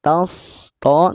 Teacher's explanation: Sod dan to dua-duanya tebal. Tas, to, naikin pangkal lidah saat huruf sod dibunyikan